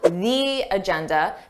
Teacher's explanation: Notice how I have that long E sound, the agenda, because agenda starts with a vowel. This is not a rule that native speakers always follow.